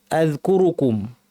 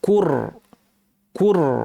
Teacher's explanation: কু বলার সময় যে প্রথম কুটা আছে এটা বলার সময় ঠোঁটটা গোল হবে, কিন্তু যখন রটা পড়বো আমরা তখন ঠোঁটটাকে নর্মাল করে ফেলতে হবে।